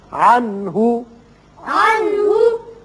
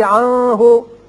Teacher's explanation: یہاں نون ساکن کے بعد ہا ہے، ہا حروف حلقی میں سے ہے، لہذا یہاں اظہار حلقی ہوگا، نون پر اظہار ہوگا۔